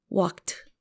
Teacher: We add the T sound when the verb ends in a voiceless consonant